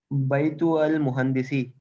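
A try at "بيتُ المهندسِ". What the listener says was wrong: मिला के पढ़ो। भाई तू अल नहीं करो ना, ता को लाम से मिलाओ।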